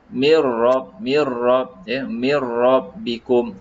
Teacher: Mi macam biasa masuk dengan ra. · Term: idgham bila gunnah